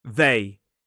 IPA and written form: ðeɪ (they)